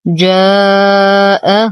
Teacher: حرف مد وبعده همز في كلمة واحدة، فالمد واجب متصل يمد بمقدار 4 إلى 5 حركات برواية حفص عن عاصم من الشاطبية.